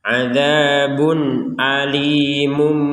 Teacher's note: yang awalnya Alimun diganti menjadi alimum seperti itu adabun alimum langsung ke mum langsung ke mim ya bukan Alimun bukan Mun lagi tapi mum gitu nah ini